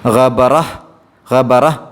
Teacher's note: ഇങ്ങനെയുള്ള താ കാണുമ്പോൾ അത് സുക്കൂനുള്ള ഹ ആക്കിയിട്ടാണ് ഉച്ചരിക്കേണ്ടത്. ഗബറഹ്, ഗബറഹ് ഒരു ചെറിയ ഹ് എന്നുള്ള ശബ്ദമാണ് വരിക, ഗബറഹ് എന്ന രൂപത്തിൽ.